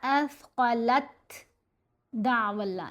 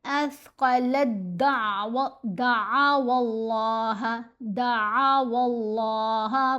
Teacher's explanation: تا اور دال کا مخرج ایک ہے، تو اب تا نہیں پڑھا جائے گا اثقلت دعو اللہ، یہ نہیں پڑھنا، بلکہ لام کو دال سے ملائیں گے۔